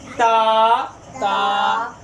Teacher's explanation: تا زبان کی نوک اوپر دانتوں کے جڑ سے · با دونوں ہونٹوں کے گیلے حصے سے